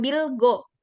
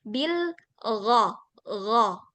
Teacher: Ghain itu nggak nempel seperti kita bilang huruf G, bukan bil go, tapi bil gha, gha.